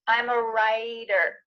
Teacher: we have that T in the middle of the word changing to a D